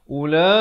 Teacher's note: Waw ini huruf zaidah hanya ada pada tulisan, tidak pada bacaan. Jadi bacanya ula, dipanjangkan 4 atau 5 harakat.